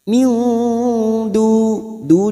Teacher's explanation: nun sukun bertemu dal ikfa hakiki kita samarkan bunyi nun sukun 3 atau 2 harokat